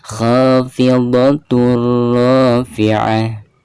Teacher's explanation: Bacaan kha dibaca dua harokat dihukumi mad tabi'i.